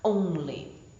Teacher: So this is a stressed syllable followed by an unstressed syllable, such as in the word only. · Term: trochee